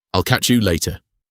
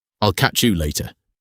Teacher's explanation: Catch you morphs into a pleasant catch you sound. The Y sound completely disappears.